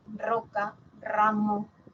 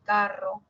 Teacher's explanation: luego está la múltiple que sería roca ramo o entre vocales carro